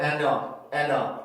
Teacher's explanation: ND 발음이 연속될 때는 D 발음을 없애줄 수 있어요. 왜 그러냐면 조음의 위치가 같기 때문에 D 발음이나 T 발음은 없앤 상태로 발음을 하는 경우가 굉장히 많습니다.